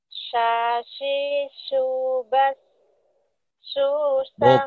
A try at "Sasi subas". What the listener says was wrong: Bukan, shinnya mana? Sasi subas saya shin. Sha. Sha. sha. Ya, sha. Saat mengucapkan sha, nanti video callan ya dilihat mulutnya. Sha.